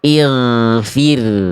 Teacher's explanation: gin sukun itu akan dibaca ketebalannya berkurang ketika gin sukunnya didahului oleh huruf berharakat kasrah.